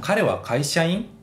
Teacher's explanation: Untuk bentuk casualnya, orang Jepang akan menghilangkan kata deska dan menaikkan intonasi atau nada di kata terakhir pada kalimat tersebut